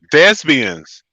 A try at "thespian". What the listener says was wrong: It's actually a P and not a B in there. So you said thespian. It's actually thespian.